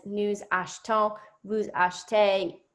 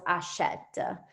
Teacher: Yeah, for the new and vous form, it almost sounds like there is no letter E between the CH and the T